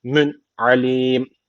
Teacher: İnnehu hakimün derken tenvinden sonra ayin geldiği için ishar tecviti var. Direkt okuyoruz. Mün alim. Bu şekilde a boğazdan mün alim.